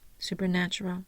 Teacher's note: I'm going to make my third syllable the primary stressor and my first syllable the secondary stressor